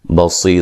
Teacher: صاد کو موٹا ادا کریں گے, یا مدہ ہے